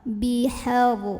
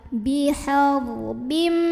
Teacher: Ada ra sukun dibaca secara tafkhim karena huruf sebelumnya yang ha barisnya fathah. Maka bacanya tebal. Bihar, pangkal lidah diangkat.